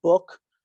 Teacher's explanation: So if you look at book, right, when you actually make the speech sound of book, the tongue tends to be higher and further back in the mouth